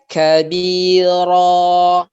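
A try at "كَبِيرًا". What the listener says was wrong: Oke, bulatkan lagi suaranya. Ro. Kabiro.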